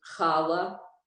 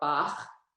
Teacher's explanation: So it's a chaf sofit. It makes that sound, that guttural sound that isn't in English